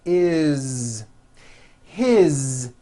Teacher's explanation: it also has a voiced Z ending